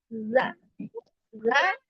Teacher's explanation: ujung lidah menyentuh ujung gigi seri atas. Ujungnya bukan ujung ini, kepala ininya bukan, tapi naik sedikit ke punggung lisannya. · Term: huruf zal